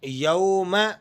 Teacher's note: واو لین ہے نرمی کے ساتھ پڑھا جائے گا